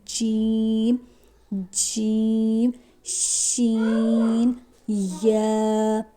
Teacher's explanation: जुबान का दरमियानी हिस्सा जब ऊपर के तालू से लगे तो ये तीन हरूफ अदा होते हैं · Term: हरफे शजरियन